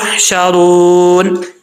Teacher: نون کو ساکن کریں گے تو یہاں پہ مد عارض وقفی ہوگی، 2 سے 2.5 الف کی مقدار آپ اس کو لمبا کر سکتے ہیں۔